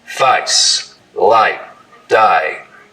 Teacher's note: So the diphthong in face starts real low, down around face, light, die. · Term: face lowering